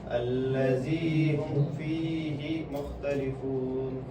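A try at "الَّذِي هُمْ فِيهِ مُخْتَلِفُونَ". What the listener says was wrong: سکتا مت کرو ایک ہی ساؤنڈ میں لے جاؤ. الذی ہم فیہ مختلفون فیہ مختلفون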